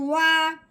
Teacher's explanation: عربی کا جو واؤ ہوتا ہے اس کو ہونٹوں کی گلائی سے ادا کرتے ہیں اور دھیان سے ادا کرتے ہیں کہ دانتوں سے ادا نہ کیا جائے